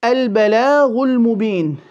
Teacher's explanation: the lam of bala will be empty and the ghain holding the dhamma will be full. In actual fact, holding any of the harakat, it should be full or within its scales.